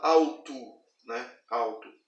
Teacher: Observe que na palavra escrita, eu estou falando de palavra, ela é escrita com L. Mas a sonoridade, e aqui na parte de baixo eu estou escrevendo o som da palavra, ele vai estar com som de U.